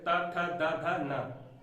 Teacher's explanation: जिन व्यंजनों का उच्चारण दांत की सहायता से होता है, इसमें जीभ की नोक ऊपरी दांत की पंक्तियों को स्पर्श करती है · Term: दंत्य व्यंजन